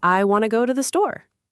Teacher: The important words are go and store. The rest is just glue. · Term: glue words